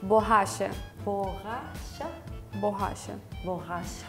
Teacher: So the double R has the ha sound, the H sound in English.